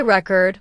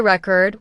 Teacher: If you say record with stress on the first syllable, it's a noun, like a music record. But if you say record with stress on the second syllable, it becomes a verb. Like I record a video.